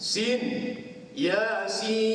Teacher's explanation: Sin tu kita baca dengan 6 harakah, ada tanda panjang atas sin tu.